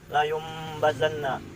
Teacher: nun mati bertemu dengan ba, sehingga nunnya diubah menjadi mim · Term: iqlab